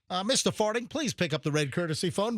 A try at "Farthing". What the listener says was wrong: It's not farting. saying it wrong. There's an H in it.